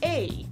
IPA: ei